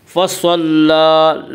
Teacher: لام کے اوپر کھڑا زبر ہے، کھڑا زبر کو ایک الف کے برابر کھینچ کر پڑھیں گے